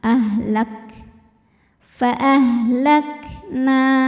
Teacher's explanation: Karena kalau kafnya sukun, keluar anginnya itu terakhir, belakangan. Jadi masih ada sifat syiddah dari kaf, yaitu suaranya kuat, lak, lak.